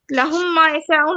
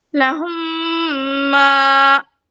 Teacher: मुशद्दद कर रही हूँ, मतलब गुन्ने के साथ पढ़ रही हूँ 1 मीम को गिराकर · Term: इदगाम शफवी